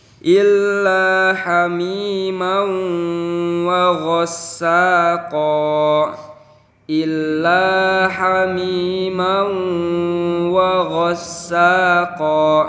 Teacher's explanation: Ada huruf mim yang berharokat fathah tain bertemu dengan waw. Berarti cara membacanya itu harus ditahan. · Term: idgham bi gunnah